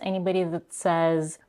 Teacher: Then we have a vowel reduction in the word that